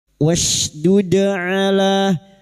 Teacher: huruf dal yang mati asli di tengah kalimat qalqalah sugro jangan lupa dipantulkan